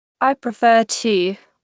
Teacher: First, the verb prefer. The stress is on the second syllable. Prefer, not prefer with the stress at the front.